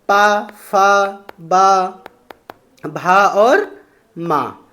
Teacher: ओष्ठ से बोले जाते हैं, होंठ से बोले जाते हैं